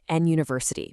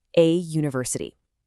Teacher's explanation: The word university actually starts with a y sound, which is a consonant sound.